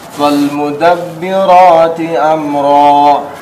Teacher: Fal alif lam qomariyah tidak dipantulkan.